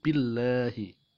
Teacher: Lam jalalah ini jatuh setelah kasroh, maka dibaca tarkik atau tipis, bukan billahi tapi dibaca billahi.